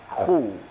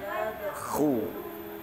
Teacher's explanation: Bacanya dengan mencucu ya, karena berharokat dhammah khu.